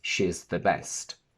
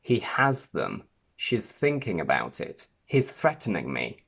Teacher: Cloth, cloths. When s or z come before th or th, we don't stick our tongue out as much as we normally would, but we only lick the bottom edge of our top teeth with our tongue.